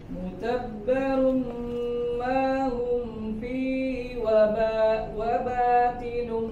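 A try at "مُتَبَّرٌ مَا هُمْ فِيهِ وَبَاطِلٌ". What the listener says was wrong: Ti-nya tebal. Wa bati huruf to. Ya, termasuk yang salah satu huruf yang perlu kita hati-hati ya, karena huruf to kalau dia dibaca tipis maka dia jadi huruf ta. Wa batilum karena satu makhraj ya, makhrajnya sama.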